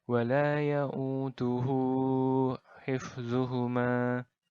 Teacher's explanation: cara membacanya adalah dengan dipanjangkan dua harokat saja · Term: Mad Silah qasirah